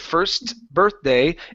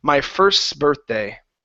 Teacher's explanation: birthday yeah mm-hmm okay so it's not necessarily a stop T we slide from one consonant right to the next and the T sort of just disappears